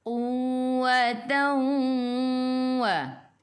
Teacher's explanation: idgham ma'al gunnah masuk bersama dengung 2 harakat